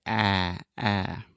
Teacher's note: this is a very open and front sound. So you want to open your mouth a lot, and then just imagine that you're kind of pushing everything in your mouth, your tongue, your teeth, your lips, everything to the front, and then say ah, ah.